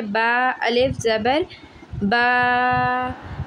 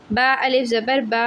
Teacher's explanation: right, एक अलिफ के बराबर खींच कर पढ़ते हैं, मीन्स टू से कि 1 सेकंड के लिए खींच कर पढ़ा जाता है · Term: अलिफ मद्दा